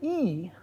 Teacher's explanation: the front high unrounded vowel. There is no vowel which is identical to that vowel in every way except that it's back.